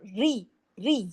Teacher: र पे भी तशदीद है। सख्ती से पढ़ा जाएगा।